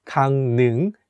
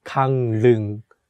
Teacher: although it has the consonant ㄹ (rieul) which is for “l” sound, when we say it, we change it to “n” sound so it becomes 강릉 (gangneung), not gangleung.